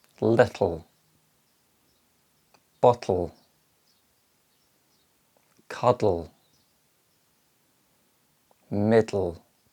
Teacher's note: the t and the sounds are followed by the la sound the air is released laterally which means the tip of the tongue remains in position but the sides release allowing air to escape through the mouth · the final consonant sounds can be described as syllabic which means they form a syllable on their own without a vowel sound